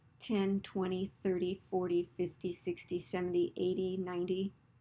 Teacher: Stress the first syllable in 10 numbers